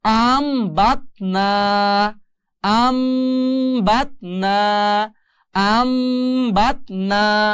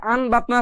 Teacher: এখন উচ্চারণ হবে আন থাকবে না আম হয়ে যাবে